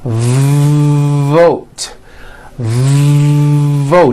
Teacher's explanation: you've got to stretch out the v like this vote vote are you hearing that long v sound